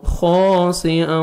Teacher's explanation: خا کو موٹا کر کے پڑھنا ہے، 1 سیکنڈ خا کو کھینچیں گے